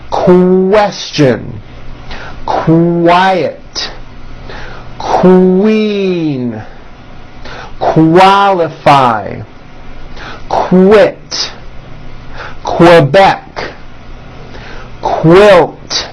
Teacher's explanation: How are Q sounds related? Well, Q sounds are made with the K sound, k, k, and the W sound, w, put together.